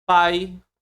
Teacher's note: O a é mais forte, o i é mais baixo. Então vou ter decrescente.